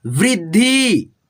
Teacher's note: यहाँ पे देखो व्री, आधा द है, यानी कि द में हलंत लगा है, तो पढ़ेंगे आधा द को इस ध में मिला करके पढ़ेंगे। जिस मतलब आपको बताया हूँ पहले भी, जो आधा रहता है ना उसके अगले वाले व्यंजन में उसको मिला करके पढ़ते हैं, वृद्धि, ठीक है।